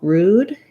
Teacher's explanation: The first vowel, rude, is an oo, tense oo sound.